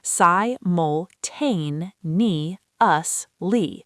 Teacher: simultaneously has stress on the fourth syllable.